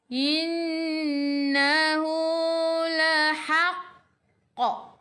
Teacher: Baju dah kotor, bajim dal qafta, dan ada baris sabdu, kita kena melantun paling kuat. Qalqalah akbar.